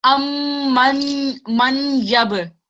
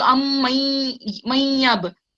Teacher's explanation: When you're joining the noon, when you're joining this with shaddat letter ya, shaddat with a ya, you're not meant to pronounce this noon. It gets silent. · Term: gunna sound